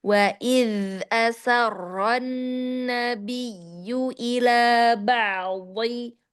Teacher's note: Wa idz dia di sini karena rokhwahnya terdengar dia kurang sedikit ya. Wa idz zanya di ujung lidah keluar ya. Dia terjulur sedikit.